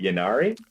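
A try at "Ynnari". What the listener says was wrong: It's Inari. The Y's are pronounced as I's.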